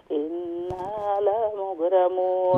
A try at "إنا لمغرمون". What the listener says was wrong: لا مغرمون، لام شورت. إنا لمغرمون.